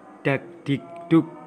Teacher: arus udara yang keluar lewat mulut terlalu keras sehingga terdengar bunyi sertaan H yang dilambangkan dengan H kecil di atas dalam bunyi kardinal.